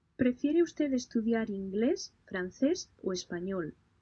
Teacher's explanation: Pay close attention to the intonation, noting that the preliminary choices carry a rising pitch, while the final choice has a lowering pitch